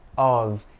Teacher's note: Mas aqui com um F só, é normalmente o som de V, of. Então, quando a gente faz a transcrição fonética, a gente consegue ver.